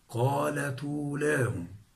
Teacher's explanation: ضممنا التاء الساكنة، أصلها قالت أولاهم، قالت أو. عند النقل تتحرك التاء الساكنة بالضم، لأن حركة الهمز الضم، فتصير قالت أولاهم.